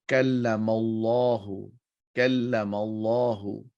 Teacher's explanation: Kallamallahu, whenever a fatha or dhamma are followed by the word Allah, then you would round the sound of Allah. Round the sound of Allah, it would be a thicker sound.